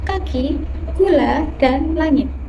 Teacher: Velar dihasilkan dengan bagian belakang lidah menyentuh langit-langit lonak. Bunyi yang dihasilkan yaitu k, ge, eng.